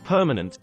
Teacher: The A in permanent has a weak sound because it is in a syllable that is not stressed. Notice that the first syllable p in permanent is stressed, but not the middle one where the A is. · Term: schwa sound